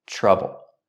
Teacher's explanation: Had trouble. Linked to the TR sound, we use the ch sound like chicken, plus the R, trouble. Remember, the vowel in trouble is a short sound, like up and cup, trouble.